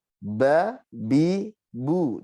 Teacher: Ba, 2 bibir ditempelkan sama. Ya. Nah, sifatnya yang pertama jahar, nafasnya tertahan. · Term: huruf ba